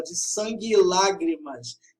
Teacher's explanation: Aqui há uma crase, o E final de sangue e o E, conjunção aditiva, se fundem na fala